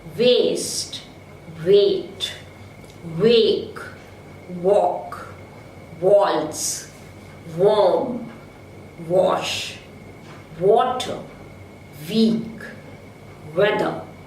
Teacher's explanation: the back of the tongue is raised to the level of the soft palate to come to the position of a vowel between close and half close, and the lips are rounded. Step number 3, there is quick movement of the tongue and the lips to the position for the next vowel. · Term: rounded labiovelar semivowel W